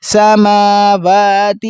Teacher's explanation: واو پر بھی کھڑا زبر ہے اور میم پر بھی، دونوں کو کھینچیں گے ایک ایک الف کے برابر۔